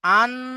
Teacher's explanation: নুন সাকিনের আওয়াজকে নাকে তুলে একালিফ পরিমাণ গুণনা করে পড়তে হবে